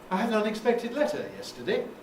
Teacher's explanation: give it its own group its own intonation phrase with a rise shoved on the end as an afterthought